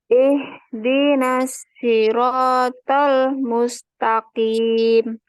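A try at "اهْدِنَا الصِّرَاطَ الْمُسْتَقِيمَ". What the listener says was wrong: Lamnya juga ya, lamnya hati-hati jangan berhenti ya. Nah, tadi berhenti di situ ya, jeda ya.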